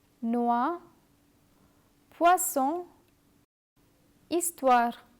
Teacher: Remember, the letters are not pronounced separately. Do not say oi, but wa. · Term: wa sound